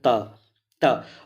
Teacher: दंत के स्पर्श का मतलब जैसे हम बोलने के लिए चलते हैं तो हमारा जीभ जो होता है तुरंत दांत में स्पर्श करता है। जैसे बोलेंगे त त, अब जीभ को रोक कर हम नहीं बोल सकते हैं, क्योंकि जीभ तुरंत जाएगा दांत के पास तुरंत। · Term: त वर्ग